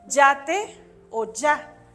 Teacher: cuando la palabra empieza con y su fonema va a ser siempre consonántico es decir va a sonar como la doble l